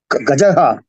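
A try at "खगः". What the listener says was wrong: இல்லையே, இங்க பாருங்க, நல்லா பாருங்க. க க க இருக்கு, இது ஜா இல்லையே, ஜா தான் இருக்கு. ககஹா.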